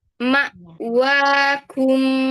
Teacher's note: Jangan terlalu ke belakang kafnya. Agak depanan dikit ya tempatnya. Titik tumpunya.